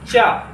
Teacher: चा, देखिए कहाँ से जो है श्वास स्पर्श कर रही है, चा का उच्चारण स्थान हो जाएगा तालु